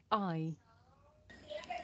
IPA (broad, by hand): aɪ